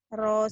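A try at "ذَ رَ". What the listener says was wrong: Kalau rosa ya gini, roza yang ini Da tipis dikit. Ini Z.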